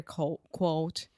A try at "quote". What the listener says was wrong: Quote. First, you just completely say coat.